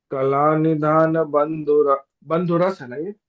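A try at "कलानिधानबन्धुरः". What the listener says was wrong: बंधुरश विसर्ग का उच्चारण श जैसा लेंगे हम। कलानिधान बंधुरश।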